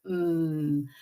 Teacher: We're not putting the schwa sound on the end. We really want to have pure sounds.